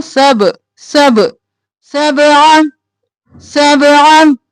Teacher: सब आ बाक़लक़ला है, आवाज पलट के वापस आएगी।